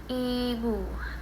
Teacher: Posisi e mulut semi tertutup dan lidahnya itu tinggi ke depan.